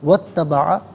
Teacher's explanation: اتبع واو پر زبر ہے، اس سے اتبع کی تا کے ساتھ ملائیں گے، درمیان میں سے الف یعنی حمزہ کو حذف کریں گے. واتبع پڑھا جائے گا.